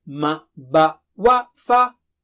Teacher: like ma, ba, wa, fa are from the lips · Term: makharij